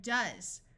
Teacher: also notice the S uses its second Sound Of Z